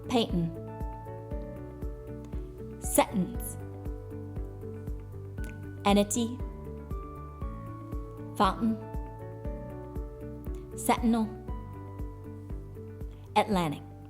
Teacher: Additionally, the T sound is elided, suppressed or omitted, or even glottalized in the following and similar words where T follows N